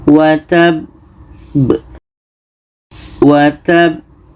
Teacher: Ba huruf qalqalah ada pantulan · Cara baca qalqalah akbar, kita berhenti lebih kurang 2 detik, setelah itu pantulkan.